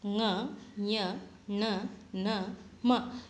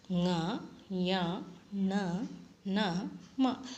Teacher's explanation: ಮೂಗಿನ ಸಹಾಯದಿಂದ ಉಚ್ಚರಿಸಲ್ಪಡುವ ವ್ಯಂಜನಾಕ್ಷರಗಳನ್ನು ಅನುನಾಸಿಕಗಳು ಅಂಥೇಳಿ ಕರಿತೀವಿ